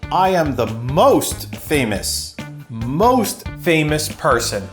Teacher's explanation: Next, let's look at where he's stressing. The really big stress point is on most.